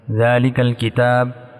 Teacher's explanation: ذال کو ہم دونوں اپنے دانتوں کے درمیان زبان کو رکھیں گے اور ذال ایسے نکالیں گے۔